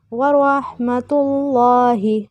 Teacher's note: لام موٹا پڑھیں گے کیونکہ اس سے پہلے پیش آ گئی